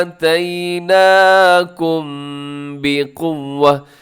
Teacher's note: یہاں پر اخفا کیا ہے، ناک میں آواز کو لے کر گیا ہوں، چھپایا ہے اس کو۔ اس کی وجہ یہ ہے کہ جب بھی میم ساکن کے بعد با آ جائے آپ نے آواز کو ناک میں چھپانا ہے، ضروری ہے، ٹھیک ہے جی۔ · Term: اخفاء شفوی